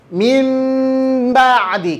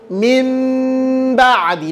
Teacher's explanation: kedua bibir berbeda dengan intibq kalau intibak ditekan Kalau iltimas tidak iltimas itu talamusan khofifan dia cuma nempel aja tanpa ditekan